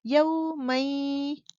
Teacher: ناک میں آواز کو لے جاؤ گے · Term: غنے